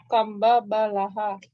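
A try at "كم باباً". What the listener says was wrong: Baban ya, pakai tanwin Bu ya. Kam baban lah. Kam baban, pakai tanwin Bu. Kam baban lah.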